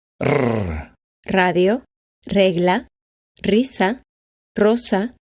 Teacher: At the beginning of a word, its pronunciation is hard and vibrant. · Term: letter R